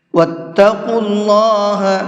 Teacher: قاف کو منہ بھر کے پڑھیں گے اور اللہ کے نام کو بھی منہ بھر کے پڑھیں گے، اس لیے کہ اللہ کے نام سے پہلے پیش ہے، اور اللہ کے نام سے پہلے پیش ہوتا ہے تو اس اللہ کے نام کو منہ بھر کے پڑھتے ہیں۔